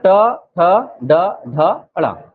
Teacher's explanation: जीभ पलट के ऊपर के हिस्से को टच करता है।